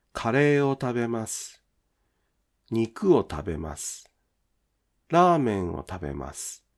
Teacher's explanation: The /u/ in su is often not pronounced clearly. · The pitch of the word final su'' drops, or the vowel u is devoiced. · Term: Vowel devoicing